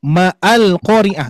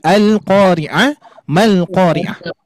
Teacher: Melanjutkan bacaan, maka hamzahnya tidak jadi dibaca a. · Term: hamzah wasol